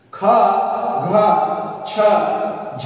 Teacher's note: जिन व्यंजनों के उच्चारण में अधिक मात्रा में समय तथा वायु की आवश्यकता होती है वे महाप्राण कहलाते हैं।